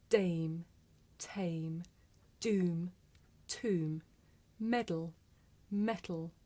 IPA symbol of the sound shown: d